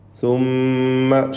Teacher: ഷദ്ദുള്ള മീമിനെ മണിക്കണം. മീം മുഷദ്ദദ 2 ഹറക്കത്തിൻ്റെ അളവിൽ മണിക്കുക.